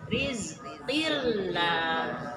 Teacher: Ri-nya tarkik karena di kasroh.